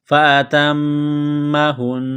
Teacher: میم مشدد ہے، غنہ کریں گے، آواز ناک میں چھپائیں گے ، ہا کو نون کے ساتھ پلس کرنا ہے، نون مشدد